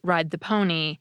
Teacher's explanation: You also get dental /d/ in phrases such as “ride the pony” and words such as “width.”